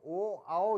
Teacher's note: ओ का उच्चारण स्थान है कंठ और होस्ट क्योंकि उसमें कंठ का और होठ का प्रयोग किया जाता है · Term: कंठ और होष्ठ